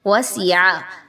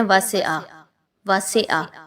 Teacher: وَسِعَ، اب اس میں بہت سے لوگ کہتے ہیں واسعہ، واسعہ، ایسا نہیں پڑھنا، سین کی حرکت کو مجہول نہیں ہونے دینا، سین زیر سی.